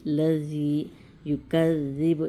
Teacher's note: زبان کی ٹپ سامنے کے اوپر کے دانتوں کے نیچے سے نکالیں گے۔ لذی یکذب، یہ بھی ذال ہے، تو یکذب بالدین، اس طریقے سے ہم یہاں اسے کھینچیں گے۔